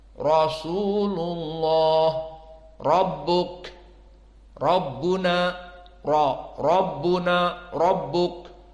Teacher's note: Jika ditanya, "Thaib ra di sini fathah?" Kita katakan, "Na'am, ala qiraah Hafs an Asim dan yang lainnya ra jika fathah maka dia menjadi mufakhamah